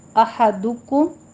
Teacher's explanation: دال کے اوپر ضمہ ہے، ہونٹ گول کیجئے ، احدکم میم پہ اظہار شفیع، اس کو لمبا نہیں کھینچنا